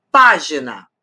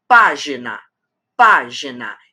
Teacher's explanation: E a antepenúltima é a forte. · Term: proparoxítona